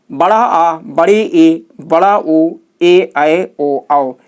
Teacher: जिन स्वर वर्णों के उच्चारण में ह्रस्व स्वर से दुगुना समय लगे। कितना लगे? दुगुना समय लगे, उसे दीर्घ स्वर कहते हैं।